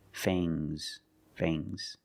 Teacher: the S is making a zebra sound, Z, but it's soft.